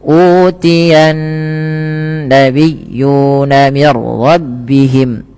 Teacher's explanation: Maaf, ini tidak ada bacaan qalqalah pada raful ra, tapi dibaca dengan bacaan idgham bila gunnah, yang dimana suara nunnya langsung dimasukkan kepada huruf ra